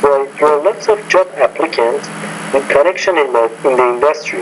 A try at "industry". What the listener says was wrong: In the industry, you're having word stress issues. This is the second time I've noticed this in one of your responses.